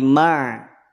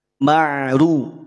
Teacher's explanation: Huruf ro harokat domah, ketika domah berarti dia tafkhim. Ketika huruf ro tafkhim, maka jangan sampai huruf ain terbawa tafkhim, terbawa tebal.